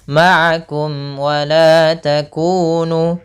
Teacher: Maka mim itu makhrajnya adalah daripada bibir. Maka suara mim itu hanya jelas saja, tidak boleh ditahan. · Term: idhar syafawi